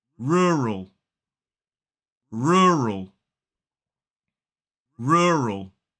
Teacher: 2 syllables, stress falls on the first.